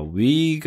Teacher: W 같은 경우는 아예 우부터 시작을 해요